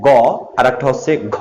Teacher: তুমি যখন গ বলো তখন কিন্তু বাতাস আছে, আর যখন তুমি ঘ, বাতাসে একটা চাপ বের হচ্ছে।